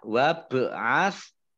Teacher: baknya bacaan qalqalah, ya, bak sukun. Qalqalah dibaca memantul.